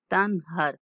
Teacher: نون پر اخفا یا غنہ نہیں کرنا، کیونکہ حروف حلقی میں سے ہا آ رہا ہے